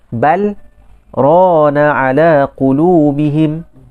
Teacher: Tapi disebabkan apa? Disebabkan ada bacaan saktah padanya, maka kita akan baca pada lam itu secara izhar.